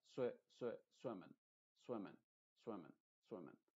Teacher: Te fijas que no digo swimming, swimming, no estoy diciendo eso, pero tampoco estoy diciendo swimming, swimming, como una E. Estoy diciendo como una E, pero muy apagada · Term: I modificada